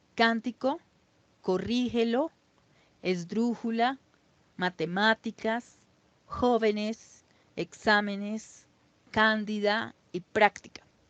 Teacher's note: las palabras esdrújulas, que son las que se acentúan en la antepenúltima sílaba y se les pone la tilde siempre.